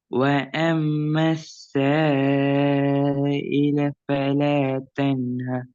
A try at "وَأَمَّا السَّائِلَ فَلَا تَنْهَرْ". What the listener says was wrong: நீட்டுறது கொஞ்சம் போதாது.